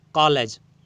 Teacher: ओ का हल्का सा उच्चारण हो रहा है, आ हो रहा है, उसके बाद ओ का हल्का सा उच्चारण हो रहा है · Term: ग्रहित स्वर